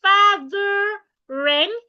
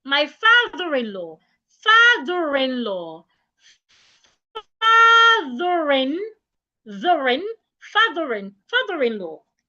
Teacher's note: You're expected to link the R to the I.